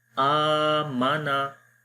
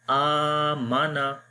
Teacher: खड़ी ज़बर को एक अलिफ के बराबर लंबा करते हैं। आ माना, मीम और नून को मैं लंबा नहीं कर रहा।